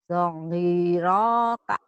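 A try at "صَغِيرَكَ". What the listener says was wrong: sogiroka, panjang.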